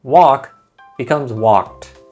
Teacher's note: Most of the time, when a verb ends with ed, you don't add an extra syllable to the end of the word. Instead, all you do is add a soft t sound to the end